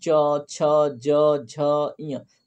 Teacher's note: तो जब च आप बोलते हैं च छ ज झ य तो आपका जो जीभ है ना वो जाके आपके तालू को टच होता है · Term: तालव्य व्यंजन